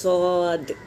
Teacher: सौद में भी सीटी बजेगी